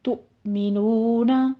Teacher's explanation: تؤمنون میں حمزہ ساکن ہے، یہاں پہ جھٹکا دیں گے